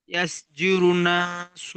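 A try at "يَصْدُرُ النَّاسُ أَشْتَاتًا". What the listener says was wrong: ইয়াসদুরু, দাল আছে, ইয়াসদুরুন নাসু আশতাতা। এখানে দাল আছে, ইয়াসদুরুন নাসু, দাল। ইয়াসদুরুন নাসু আশতাতা। আপনার জুরুন হয়ে যাচ্ছে, দাল পেশ দু, র নুন পেশ রুন, দুরুন।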